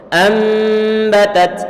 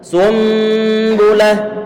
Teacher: Di situ ada huruf nun sukun bertemu dengan huruf ba. Ini nun sukun bertemu dengan huruf ba. Sehingga suara nun sukunnya perlu diganti dengan huruf mem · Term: sistem iqlab